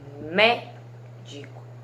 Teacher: Médico, médico, 3 sílabas, e aí a mé é a sílaba mais forte